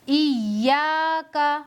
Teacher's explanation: یا کو حمزہ سے ملا کر پڑھیں گے، یعنی اپنے سے پہلے والے حرف کے ساتھ ملا کر پڑھیں گے اور دوسری مرتبہ یا کو اپنی حرکت سے پڑھیں گے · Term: حرف مشدد